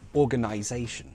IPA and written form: ɔːgənaɪzeɪʃən (organization)